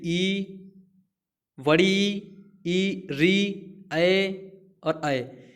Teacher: ऐसे स्वर कि जिनके उच्चारण के समय हमारे ओष्ठ की जो स्थिति होती है वो गोल नहीं होती है, उन्हें अवृत्ताकार कहा जाता है।